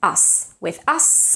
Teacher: when you have us it has to stay voiceless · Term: voiceless s